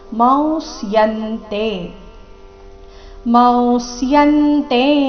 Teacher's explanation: ಮ ನಂತರ ಬಂದಿರುವ ಅನುಸ್ವಾರದ ಉಚ್ಚಾರಣೆ ಬಾಯಿ ಮತ್ತು ಮೂಗಿನಿಂದ ಹೇಳುವ ಅವ ರೀತಿ ಇಲ್ಲಿ ಬರಬೇಕು